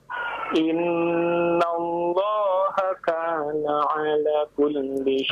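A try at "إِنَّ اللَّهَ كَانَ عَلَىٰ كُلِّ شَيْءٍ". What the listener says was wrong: Alaknya kurang panjang sekarang. Jangan terburu-buru ya. Innallaha kana ala kulli syai'in hasiba.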